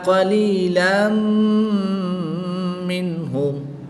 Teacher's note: یہاں پر ادغام مع الغنہ ہوگا، غنہ کے ساتھ ادغام کریں گے